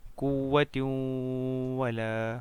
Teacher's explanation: Dibaca masuk dengan dengung dan ditahan sampai 3 harakat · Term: idgham bi gunnah